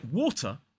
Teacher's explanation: in a word like water the second syllable has a schwar in it as an isolated word but I hear a lot of students